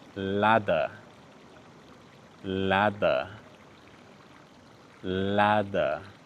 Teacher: You're probably not saying a proper T. You're making a quick tap with your tongue.